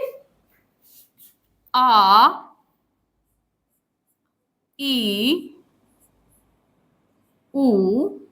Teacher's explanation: दीर्घ स्वर उच्चारण करते समय ह्रस्व से दुगुना समय लेता है।